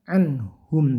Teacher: nun sukun bertemu ha, itu bunyikan jelas karena ini berhukum izhar, nggak boleh dibaca dengung, jadi singkat saja anhum.